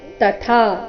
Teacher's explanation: ತ ಮೊದಲು ಅಲ್ಪಪ್ರಾಣ ನಂತರ ಥ ಮಹಾಪ್ರಾಣ ದೀರ್ಘ